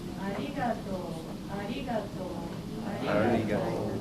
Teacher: So when we say arigato, the pitch matters. You go up and down and stay low. Go low, high, low, low, low.